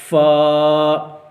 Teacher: فا جو ہے اس کا مخرج ہے کہ اوپر والے جو سامنے والے دانت ہیں ان کو جو نیچے والا ہونٹ ہے اس کے تر حصے کے ساتھ جو ہے وہ لگایا جاتا ہے تو پھر وہاں سے جو ہے وہ فا کی ادائیگی ہوتی ہے. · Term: فا کا مخرج